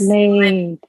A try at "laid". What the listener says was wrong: Yep, you got it.